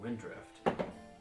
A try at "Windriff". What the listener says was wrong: No D.